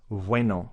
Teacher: you spell the word good in spanish it's with a b the problem is the pronunciation is exactly the same it's vueno it's kind of a bv for both